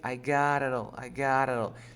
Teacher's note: you pronounce the t or d like an r in spanish